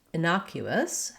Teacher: innocuous, has second syllable stress. That means that the N-O, the na syllable, is stressed, and that letter O says the vowel ah.